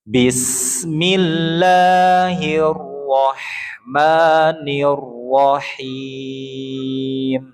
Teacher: Di kalimat Allah dan arrahman jangan panjang-panjang, Pak. Dua harakat aja. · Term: 2 harokat